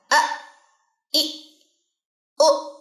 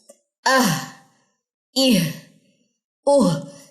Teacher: حمزہ جزم کے ساتھ پڑھیے. حمزہ کے اوپر جب جزم آ جائے تو جھٹکا دیتے ہیں